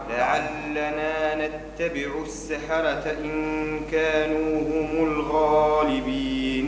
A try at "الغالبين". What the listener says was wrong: مدش برشة الغيب. الغالبين.